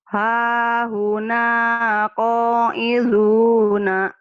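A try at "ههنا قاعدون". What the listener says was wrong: dalnya keras.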